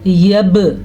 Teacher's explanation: با پہ ساکن ہے تو اسی وجہ سے ہم ادھر جھٹکا دیں گے، اسے قلقلہ کہتے ہیں